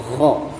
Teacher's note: tepatnya itu di tenggorokan paling atas tenggorokan, ya. Jadi bukan langit-langit atau lidah. Maka caranya mulut kita buka kho, ya, dan rasanya itu di dalam kho, ya, seperti itu.